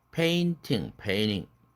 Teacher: ed나 ing를 붙임으로써 nt가 모음 nt로 끝난 단어들이 졸지에 모음 nt 모음이 돼버렸죠. 이런 때 트가 날아간다는 것입니다.